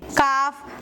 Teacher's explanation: जबान की जड़ ऊपर के तालू के सख्त हिस्से से मिलकर अदा होता है। यह है जबान की जड़ और यह है ऊपर के तालू का सख्त हिस्सा।